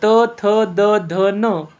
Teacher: त थ द ध न आणि ल स हे दंत्यवर्ण आहे यांचा उच्चार करताना दाताला स्पर्श होतो जिभेचे टोक जे आहे ते दाताच्या मागे टेकते